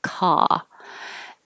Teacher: your jaw is very open uh your tongue is very low and flat pulled back a little bit